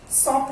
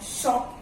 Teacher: श बोलते हैं तो टंग जो है वो टीथ को टच नहीं कर रहा, it's inside your mouth but it is not touching the teeth